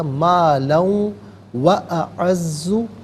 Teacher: مالن میں لام پر دو زبر کی تنوین، اسے واو کے ساتھ ملا کر واو کی آواز کو ادا کیا جائے گا، مالن و اعز نفرا، یہاں وقف کریں گے تو نفرا پڑھیں گے۔